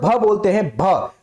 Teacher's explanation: आपकी नाक पर कोई प्रेशर नहीं पड़ रहा है कंपन नहीं हो रहा है